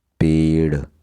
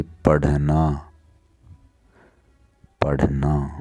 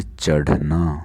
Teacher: जब हम इनको बोलते हैं तो जीभ का एक झटका सा लगता है, जैसे हम कोई चीज़ फेंकते हैं, ऐसे झटक कर देती है जीभ इनको।